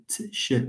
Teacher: There is a type of sound, or there is a class of sounds which we pronounce by articulating part of it at the level of the alveolar ridge and the other part, the other 50%, at the level of the palatal. We have two in English.